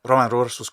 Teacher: the final o shortens very good conversational thing to do